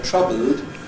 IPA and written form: ˈtrʌbld (troubled)